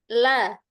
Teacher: Tika tidak usah ada suaranya tapi ujung lidahnya itu ditempelkan ke belakang, ke gusi belakang 6 gigi atas